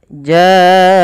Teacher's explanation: pada lafal bacaan jaahum ini wajib kita panjangkan sepanjang empat atau lima harakat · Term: mad wajib muttasil